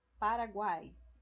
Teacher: três vogais na mesma sílaba